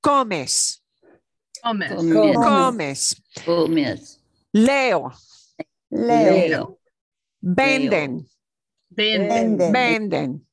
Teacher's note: the second to the last syllable is what gets more stress or more emphasis. Okay, second to the last, not the last syllable, but second to last.